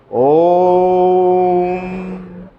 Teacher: ओम का उच्चारण करने पर 3 मात्राओं का समय लगता है। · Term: प्लुत स्वर